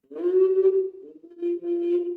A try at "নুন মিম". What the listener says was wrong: থেমে যাচ্ছ যে। নুন মিম, এক এক টানে চলে যাবে।